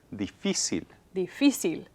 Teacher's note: So I need to put an accent mark because the stress is on the second to the last syllable